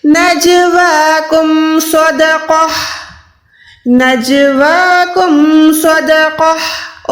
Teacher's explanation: गोल ता को हमने हा साकिना में कन्वर्ट कर दिया